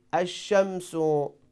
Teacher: When we say ash-shamsu, so we don't pronounce lam, but we pronounce letter shin two times. So we mean here lam changes to letter shin, so here we have idgham.